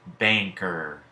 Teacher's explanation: the single consonant N can also represent ing, as in banker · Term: NG sound